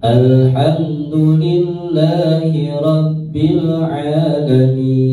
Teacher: Ini kembali nadanya datar ya, kuncinya nadanya adalah datar.